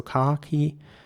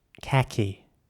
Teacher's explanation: again the A in British English is pronounced R, so khaki. And in American English, khaki with an A.